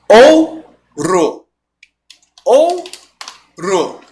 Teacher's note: Por isso ele está decrescendo. É um ditongo que sai do som forte e vem para o som fraco.